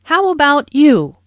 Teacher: notice the intonation Falls here because the speaker is going to follow it up with a detailed question